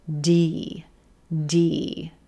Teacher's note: we start with the D D D consonant the tip of the tongue is up behind the top front teeth uh gently tapping the alular Ridge then we then release into